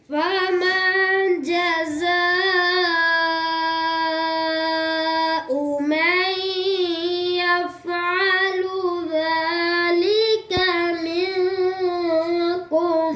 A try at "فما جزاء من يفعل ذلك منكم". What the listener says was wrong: या फा पर कलकला कर दिया